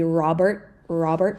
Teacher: In American, we would probably not say this T at the end